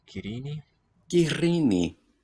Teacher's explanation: the R sounds long, trilled like the Spanish double one, except this one is voiceless